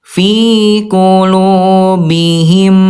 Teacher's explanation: Ditahan dua ketukan lambat dan didengungkan. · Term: huruf ghunah